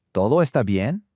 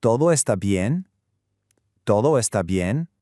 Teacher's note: Listen really closely to that upward questioning intonation at the end of the phrase.